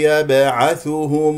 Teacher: تقول والموتى هنالك من يقول والموتى خطا والمو والموتى يبعثهم الله باء قلقله قلقله صغرى لان في وسط الكلام